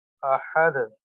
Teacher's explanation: اس وقف کی صورت میں اس دال کو اس کے مخرج میں ہلا کر پڑھیں. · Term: قلقلہ